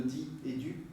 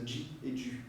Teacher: Il y a beaucoup de choses qui se font sans que les gens y fassent attention, comme par exemple en français, maintenant il y a des gens de plus en plus qui disent, au lieu de di et du, qui disent ji et du. Ou bien au lieu de ti et tu, qui disent chi et tu.